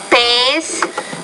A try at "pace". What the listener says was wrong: Now the P is killing you and the T. You're not pronouncing those with enough air.